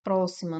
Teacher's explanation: Próxima separa dessa forma, próima. Nós temos aqui como sílaba tônica eh o pró. Então aqui nós temos uma pro paroxítona, né?